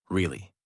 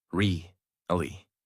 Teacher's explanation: Voice rises and falls. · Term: Natural American tone